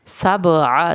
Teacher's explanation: सबअ सीन को सीटी की आवाज़ के साथ पढ़ना है, बा का कलकला करना है